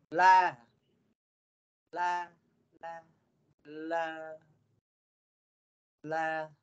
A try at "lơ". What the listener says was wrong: Vẫn chưa được đúng không? Bây giờ mình phát âm như thế này. Là. Ví dụ cái tay bên tay này của tớ đang lắc này là âm ơ đây. Lơ là lơ xe á. Lơ này. Cậu hát lơ. Thấp hơn chút này. Lơ. La bẹt.